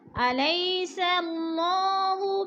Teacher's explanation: صلّہ کی اللہ کو پر پڑھا جائے گا کیونکہ اللہ سے پہلے لفظ کے اوپر زبر ہو تو اللہ پر پڑھا جاتا ہے